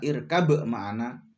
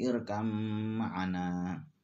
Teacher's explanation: ba yang bertemu dengan mim, irkam ma'ana, tidak boleh dibaca irkab ma'ana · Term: idgham mutaqariban